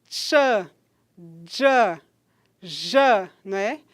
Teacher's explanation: o articulador ativo é a parte anterior da língua e o articulador passivo é a parte medial do palato duro. Então, quando eu digo um som como ch em tia, o dia carioca, o chá, o já, a gente tem aí a parte anterior da língua que toca na parte medial do palato duro. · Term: alvéolo-palatal